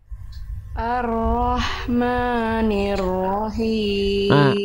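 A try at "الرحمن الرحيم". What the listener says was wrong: Himnya kurang Bunda. Himnya dilafalkan dari tengah tenggorokan. Him, him, jangan him, tapi him. Ar-Rahmanir-Rahim.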